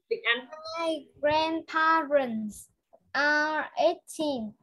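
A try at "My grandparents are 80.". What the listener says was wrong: You don't say 18. If you say 18, it's not this one. It's this one. 80. Teen, not teen.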